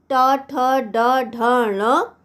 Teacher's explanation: मूर्धन्य ध्वनियाँ तालु का सबसे ऊपरी भाग यानी मूर्धा से निकलने वाली ध्वनियाँ